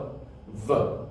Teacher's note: We use our teeth, that's what the word dental means. We put it against our bottom lip, and we bring them together, and we rush the air through it, and then we get the sound V, V. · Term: dental labial fricative